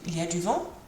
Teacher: just by putting your voice up at the end, that rising intonation turns it from a statement into a question